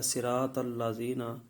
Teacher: اگر کوئی اس طرح پڑھے گا صراط الذین، تو اس نے لحن جلی کا ارتکاب کیا، صاد کی جگہ پر سین پڑ گیا، طا کی جگہ پر تا پڑ گیا